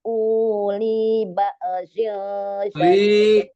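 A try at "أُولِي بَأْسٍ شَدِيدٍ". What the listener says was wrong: Jangan jangan dipanjangin. Uli ba'sin syadid.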